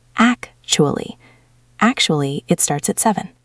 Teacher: Make sure you stress the first syllable.